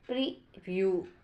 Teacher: stress on the second syllable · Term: stress pattern